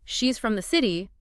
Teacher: If you say, she's from the city, the from is reduced. It sounds more like from.